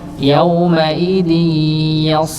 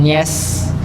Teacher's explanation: yasduru pakai huruf sha, yauma idzi yas, bukan yes, yas, yas, ditebalkan huruf sha-nya